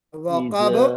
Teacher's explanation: اس میں با میں قلقلہ بھی کرنا ہے.